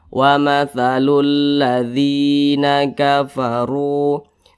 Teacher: huruf ro dibaca tebal dibaca takhim karena huruf ro memiliki tanda baca domah